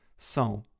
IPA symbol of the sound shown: sɔ̃